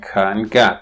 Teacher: The tongue body, on the other hand, is used for producing ka and ga, because that's further back in the mouth